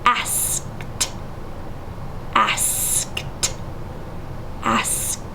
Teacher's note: When it makes an unvoiced sound, then the ed makes the t sound.